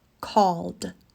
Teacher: is to look at the final consonant in the verb call call ends in the L sound which is voiced · Call ends in the L sound, which is voiced. L. So the ending is a D sound.